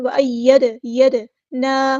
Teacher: دال ساکن ہے تو یہاں پہ قلقلہ ہوگا.